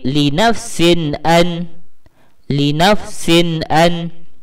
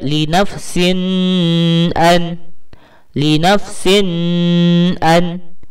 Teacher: Tanwin di sini kita baca jelas tanpa dengung. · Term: izhar halqi